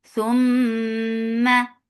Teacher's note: This kunna is akmal, so keep the sound in your nose for a longer time. Whenever meme and noon are with tashdid, they get akmal gunna.